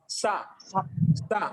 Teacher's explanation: మన నాలుక అనేది దంతాలను తగులుతూ ఉంటుంది. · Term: దంత సకారం